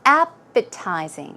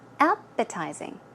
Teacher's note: The stress goes on the first syllable.